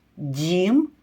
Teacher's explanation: перший звук дь це М'який приголосний другий звук і [музика] Це голосний третій звук м це твердий приголосний